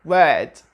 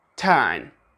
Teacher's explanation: Simply, most of the British people do not pronounce the R, especially if it is preceded by a vowel. In words like word, turn, the R is not pronounced, contrary to the American accent. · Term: non-rhotic accent